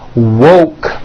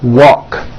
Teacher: Instead of saying woke, when they say it, it sounds like walk.